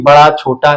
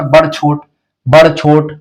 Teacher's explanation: पश्चिमी हिंदी में आकारांत की प्रधानता है जैसे कि बड़ा छोटा ऐसे बोलते हैं